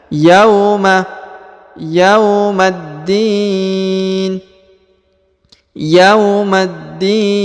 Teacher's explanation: huruf ya diayun sekali karena di depannya terdapat wau sukun